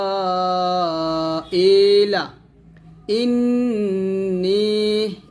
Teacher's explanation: ইন গুণনা করবেন, ওয়াজিব গুণনা